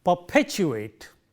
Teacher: Here in this word, the first one is unaspirated, the second one is aspirated because of the positioning of the stresses there, and therefore, we would say perpetuate. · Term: aspirated P